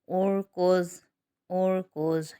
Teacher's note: حمزہ را پیش اور، کاف ضاد پیش کوز، اور کوز اور کوز۔ یہاں پر را ساکن ہو رہا ہے لیکن اس را سے پہلے حمزہ پر پیش ہے تو را کو موٹا پڑھا جائے گا، اسی طرح ضاد بھی موٹا ادا ہوگا۔